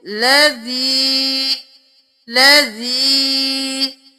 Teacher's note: زازیر کے ساتھ یا ساکن بھی ہے تو ہم ایک الف کے برابر کھینچیں گے تو اس کو پڑھیں گے لذی لذی.